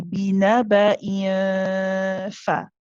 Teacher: the bottom lip isn't fully on the teeth yet, but I'm bringing it up very close to the teeth.